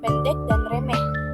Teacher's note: lambang fonetis E tertutup dengan bunyi depan sedang terbuka tak bulat